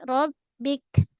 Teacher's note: Pada ba tahan suara jangan ram. Jangan mengalir rab bik. Kemudian pada kaf tahan dan lepaskan angin.